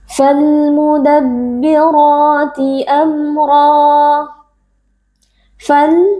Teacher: bertemu dengan salah satu huruf qamariyah yaitu huruf mim di sini kita membaca Alif lamnya dengan izhar atau dengan jelas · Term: alif lam alqamariyah